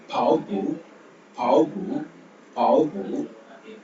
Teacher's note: பி sound வரும்போது காற்றை வெளியே விடாம சொல்லுவோம்